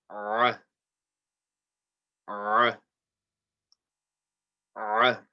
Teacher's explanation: So the Ain, again, from the middle of the throat, you're going to say ah, ah, ah.